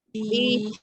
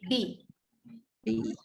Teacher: ni adalah ya mat, dia akan datang daripada rongga mulut, bunyikan bi panjang.